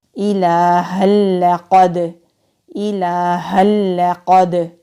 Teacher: قاف حلق سے ادا ہوگا، مستعلیہ حروف میں سے ہے، دال ساکن ہے تو کلکلا ہوگا۔